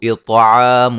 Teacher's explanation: طا کو موٹا ادا کریں گے